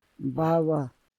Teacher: The voiced plosives have considerable pre-voicing or pre-nasalization, indicated by the lengthy negative voice onset times.